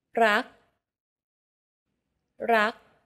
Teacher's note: Do you notice how air in the final K sound is not expelled? This is true for all final consonants in Thai words.